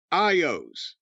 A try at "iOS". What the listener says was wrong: iOS. You don't read it like a word. You don't read FBI as FB.